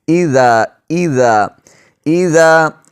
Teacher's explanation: زال کو نرمی سے، سیٹی کی آواز اس پر بالکل نہ آئے